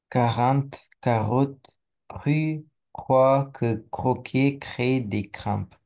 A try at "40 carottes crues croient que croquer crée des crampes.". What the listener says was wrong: Parfait.